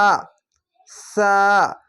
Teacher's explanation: হালকা জিহ্বা বের করে এক আলিফ টেনে পড়বেন